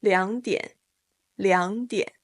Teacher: case you need a little reminder of the third tone change both 两 liǎng and 点 diǎn are third tones and that means 两 liǎng will turn into the second tone